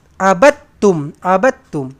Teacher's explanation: Cara bacanya adalah dengan kita membuang huruf dal ni, menggugurkan ataupun kita silentkan. Kita silentkan huruf dal, tak payah baca. Ba terus lompat melekat dekat huruf ta ni. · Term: idgham mutajanisain